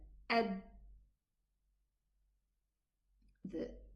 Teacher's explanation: The makhraj is totally closed, and that's why the dal sound terminates.